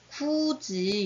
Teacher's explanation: 받침에 있던 디귿이나 티읕이 지읒이나 치읓으로 바뀌면서 연음이 돼요. 그래서 디귿일 땐 지읒으로, 티읕일 땐 치읓으로 이렇게 바뀌게 됩니다.